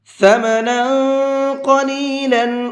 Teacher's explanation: ثمنا، نون کے اوپر تنوین ہے اور تنوین کے بعد میں قاف ہے، قاف بھی اخفا کے حرفوں میں سے ہے تو یہاں تنوین کے اندر اخفا کر کے پڑھیں گے